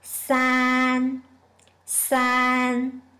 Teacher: It is a high pitch, flat tone.